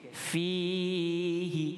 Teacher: kita baca dengan huruf fa ni huruf yang ringan. Jadi kita nipiskan dia.